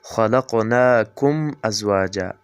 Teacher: میم ساکن کې غنه نه کیږي. دی غنې نه کولو ته اظهار شفوي وایي